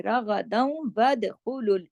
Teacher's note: اب جب ود کریں گے تو دال پہ کلکلا بھی ہوگا کیونکہ دال جزم کے ساتھ ہے